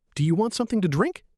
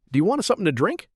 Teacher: Do you becomes D'ya Want to becomes Wanna Sounds connect and shrink.